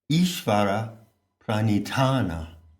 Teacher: It works when you aspirate the last syllable.